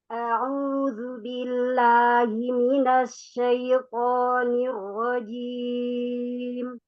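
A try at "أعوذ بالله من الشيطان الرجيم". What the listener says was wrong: Baik, sekali lagi lamnya masih agak naik bila, jangan bila, pangkal lidahnya turun. Billahi, billahi. Coba di huruf mimnya, mina, mina.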